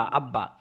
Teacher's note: বা এর উপরে। তাহলেবা হরফটা দুইবার উচ্চারণ হবে · প্রথমবার ডানের হরকতের সাথে দ্বিতীয়বার নিজ হরকতের সাথে মিলে উচ্চারিত হবে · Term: তাশদিদের উচ্চারণ